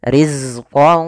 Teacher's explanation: salah satu sifatnya adalah sifat jaharnya tertahannya nafas tapi mengalirnya suara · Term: sifat rakwahnya